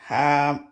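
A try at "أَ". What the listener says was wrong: Non, c'est pas ha, c'est a. A.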